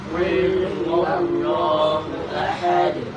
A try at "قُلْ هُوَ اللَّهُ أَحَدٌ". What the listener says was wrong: Qul huruf lam kita berikan juga waktu ketika kita sebutkan. Kita bilang Qul huwallahu ahad. Bukan Qul hu. Karena kalau kita nggak kasih waktu bisa jadi ada kol-kolah di situ. Sedangkan lam nggak punya sifat kol-kolah.